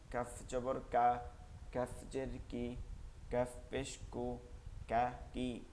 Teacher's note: কাফ হচ্ছে জিব্বার গোড়া থেকে একটু সামনে আগাইয়া, জিব্বার গোড়া থেকে একটু আগে বাড়িয়ে তার বরাবর উপরের, ওই বরাবর উপরে তার সঙ্গে লাগে নরম আওয়াজে, চিকন আওয়াজে।